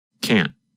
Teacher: The N sound, n, lasts longer than in the negative form. In fact, in the negative form, because the tongue and voice stop, there is almost no sound of the letter N